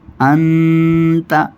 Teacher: نون ساکن کے بعد جو تا آئی ہے، یہاں کیا ہوگا؟ اخفاء ہوگا، یعنی ناک میں آواز لے جائیں گے